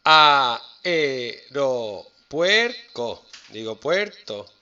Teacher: Puer es una cerrada y una abierta, es diptongo, pero ae son dos abiertas, es un hiato.